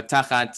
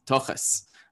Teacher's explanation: with the Yiddish pronunciation, the kamatz a vowel turns into an O, and the thav, which in my accent just stays as a plosive, but it's a tochas, and that's tochas.